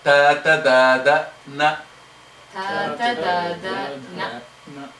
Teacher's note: The tip goes up to the teeth.